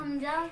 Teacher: حلق کے تیسرے حصے سے ادا ہوتا ہے.